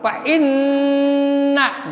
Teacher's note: Fainna harus sampai ke hidung. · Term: Guna musjadah